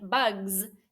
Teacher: sometimes the suffix s like in bugs sounds like a z too